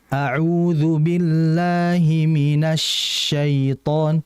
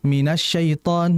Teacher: Sifat tafasyi ini khusus untuk syin. Biar udara dalam mulut itu nyebar. Oke ya. Jadi ditahan dulu.